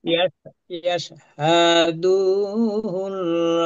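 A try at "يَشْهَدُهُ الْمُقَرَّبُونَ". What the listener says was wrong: না এখানে টান নেই, এখানে ইয়া হিসেবে বলি, ইয়াশহাদুহুল মুকাররাবুন। এখানে দুতে টান নেই। আমি বলি আবারও, হারাকাত, হারাকাতে টান হবে না। জবর জের পেশকে হারাকাত বলে, হারাকাতে আমরা টান দেব না, কারণ হারাকাতে তাড়াতাড়ি করতে হয়। হারাকাতের নিয়ম আমরা পড়ে এসেছি কায়দাতে।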